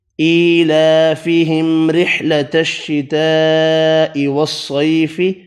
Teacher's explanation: الف کی مقدار میں کھینچ کر پڑھے، میم پر اظہار کیا، را باریک پڑھی زیر کی وجہ سے ، بڑی مد 5 الف کی مقدار میں کھینچ کر پڑھی، · صاد حروف مستعلیہ پر پڑھا